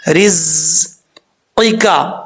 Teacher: پہلا قاف جو ہے دو نقطوں والا پر پڑھا جائے گا یعنی موٹا پڑھا جائے گا ، آگے جو کاف ہے یہ بریک ہے، یہ اس کو · زا سیٹی کے ساتھ پڑھا جائے گا کیونکہ حروف صفیریہ میں سے ہے، را کے نیچے زیر را